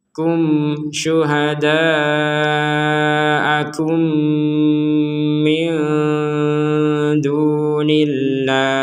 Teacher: Mim mati bertemu mim. Diperkuat dengan adanya tasydid. Maka ini dibacanya dengung.